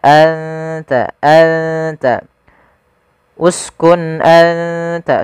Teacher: gusi atas dengan gigi seri atas maka anta anta uskun anta sambil ditahan ditahan dengungannya dua harakat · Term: ikhfa